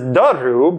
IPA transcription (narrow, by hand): d̪əru